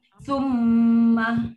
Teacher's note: kita ada bunyi lunak yang keluar dari rongga hidung iaitu dengung